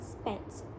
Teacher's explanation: The tongue is positioned in a mid to open and it articulates towards the front of the mouth. The tongue is not as close to the hard palate. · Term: Lax front vowels